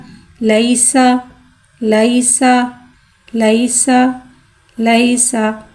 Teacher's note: सीन में सीटी को ज़ाहिर करके पढ़ेंगे। सीन के बाद ज़बर है, ज़बर को मुँह खोल के अदा करके पढ़ेंगे।